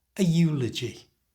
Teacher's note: even though the word eulogy begins with a vowel, the letter e, it's said with a y sound. And because of that, we use the article a.